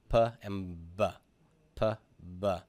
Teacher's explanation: The P and the beta are both the same consonant, except for the fact that I've got vocal cord vibration